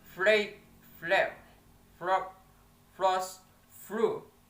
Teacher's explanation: The next, that is a voiceless labiodental fricative sound F